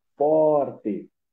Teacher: A gente percebe que a pronúncia do for, ela é mais marcada do que a do T. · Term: sílaba tônica